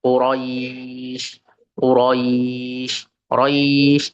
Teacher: Quraisy di situ dibacanya 4 sampai 5 harokat, merupakan mat lin.